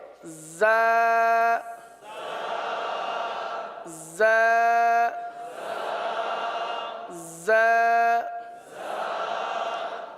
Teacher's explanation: जा ये जबान की नोक और दोनों दांतों के अंदरूनी किनारे से अदा होते हैं। · ویسے زبان زیادہ تر نیچے کی جانب رہتی ہے اور نیچے کی جانب رہ کر زا سیٹی کی آواز کی طرح اس حرف کی آواز نکلتی ہے